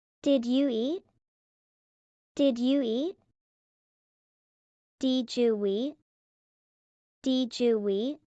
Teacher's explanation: D plus Y equals J. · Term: liaisons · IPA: /dʒ/